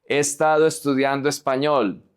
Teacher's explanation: So we don't say he, we say e. The O connects to the E.